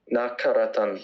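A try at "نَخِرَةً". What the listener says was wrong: Nakha, not kha, khi. Nakhiratan. Nakhiratan. Nakhiratan.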